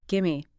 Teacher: the v sound in give disappears into the m of me pretty much.